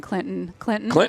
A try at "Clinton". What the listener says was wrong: Clinton. You don't pronounce the T.